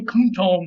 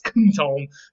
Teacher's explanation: Don't pay attention, and it's probably going to come out as kuntom, because the M will assimilate to the T and become more of an N sound. So we think kuntom was the original conservative way of saying it before assimilation happened.